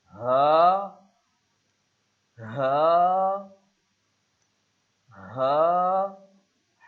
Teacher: حلق کے آخر سے جو سینے کی طرف ہے